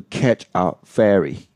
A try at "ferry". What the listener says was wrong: You mean catch a ferry. Ferry. So here we have fairy, which is one of the vowels sounds we're going to deal with today. Fairy. The sound.